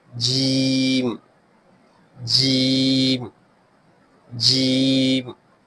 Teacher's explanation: Middle part of the tongue touches upper side of mouth.